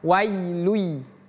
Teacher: lun di sini kita tidak baca tanwinnya, tidak perlu kita baca un, tapi langsung pindah ke huruf ya-nya. Namanya idgham bighunah. · Idgham itu artinya melebur. Jadi, langsung pindah ke huruf ya.